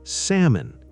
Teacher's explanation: And salmon becomes salmon. The L is silent.